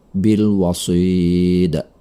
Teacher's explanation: Ini adalah qalqalah. Karena berada di ujung kata, maka bunyinya dipantulkan dengan pantulan besar.